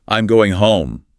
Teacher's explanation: falling intonation typically used for statements.